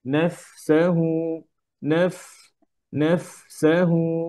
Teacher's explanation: ফায়ের হামসটা যেন ক্লিয়ারলি হয় যেন সিনের সাথে না মিশে যায় হ্যাঁ যেমন নাফসাহু নাফ নাফসাহু এইভাবে নাফসা نفسه মিলে না যায়